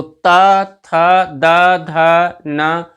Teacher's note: जीभ हमारी जो है वो दांतों से स्पर्श करती हुई आवाज इनकी आती है, इसीलिए इनको दंत वर्ण कहते हैं।